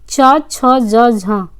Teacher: दी गई ध्वनियों में च, छ, ज, झ स्पर्श संघर्षी ध्वनियाँ कहलाती हैं